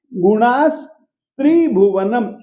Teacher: विसर्ग को हम दंत्य स ही करेंगे क्योंकि त जो है वो दंत्य है, इस कारण से।